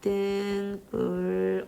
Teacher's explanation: 얘들이 울림소리지. 자, 울림소리 뒤에 있는 예사소리가 된소리 됐어. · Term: 사이소리 현상